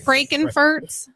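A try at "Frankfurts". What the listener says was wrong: Frankfurt. Franken. There's no N. in there.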